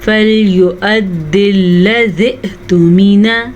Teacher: حمزہ کے اوپر ساکن ہے تو ہلکا سا جھٹکا پیدا ہوگا